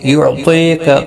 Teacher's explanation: یا مدہ بھی ہے، ایک الف کی مقدار کے برابر کھینچ کر پڑھیں گے